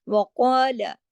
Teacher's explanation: قاف کے ساتھ جو مد الف مد ہے یہ بھی موٹا ہو جائے گا